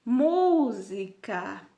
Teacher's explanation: mu, ele é uma sílaba que sobressai com as demais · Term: sílaba tônica